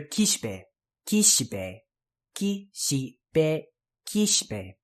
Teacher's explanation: Another whispered vowel there, the shi.